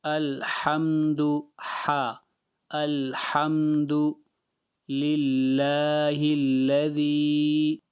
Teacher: لفظ اللہ کو باریک پڑھنا ہے، اس لیے کہ لفظ اللہ سے پہلے کسرہ ہے